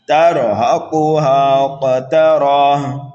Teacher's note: کاف کو پر پڑھیں گے، کاف حروف مستعلیہ میں سے ہے، ہا کو کھینچ کر کے پڑھیں گے الف مدہ کی وجہ سے ایک الف کے برابر